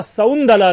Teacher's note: और यही कारण है जो शकुंतला है उसका सौंदला देखिए क्या हो रहा है, जो क है उस क का लोप हो गया है